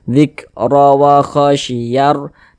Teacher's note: Zik, huruf ra memiliki tanda baca harokat fathah. Ini huruf ra ada harokat fathah, huruf ra juga dibaca tebal.